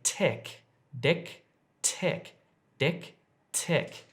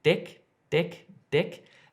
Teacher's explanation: the difference is here if I'm saying dick dick dick it's my tongue is hitting the top of my mouth just behind my teeth · make your tongue hit your teeth not the roof of your mouth